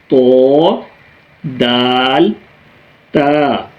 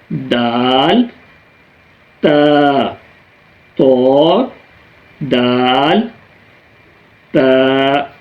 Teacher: تو ہماری زبان کی نوک جب ثنایا علیہ کی جڑوں سے لگے تو اس سے یہ 3 حروف ادا ہوتے ہیں، تو تھوڑا سا آپ فوکس کریں یہاں پہ، جیسے یہ زبان ہے اور زبان کی نوک جو ہے ہمارے ثنایا علیہ یعنی اوپر کے سامنے کے 2 دانتوں کی جڑوں کے ساتھ ٹچ ہو رہی ہے